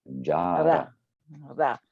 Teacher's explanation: It's actually palatal rather than dental. Anyway, but it's basically ra, jara.